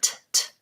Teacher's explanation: a true T, little puff of air